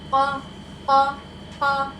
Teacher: ठीक है, ये साउंड कहाँ से आ रहा है? ये हमारा कौवे के करीब नर्म तालु से लगेगा। · क़ाफ हमारा हरूफ मुस्तालिया है, मोटा हर्फ है, उसके साथ जो अलिफ है वो भी मोटा पढ़ा जाएगा।